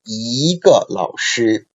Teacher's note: So even if in spoken Chinese, 个 is read as a neutral tone, like in this case, but 个 it's a fourth tone syllable, right? So 一 before 个 is changed into second tone.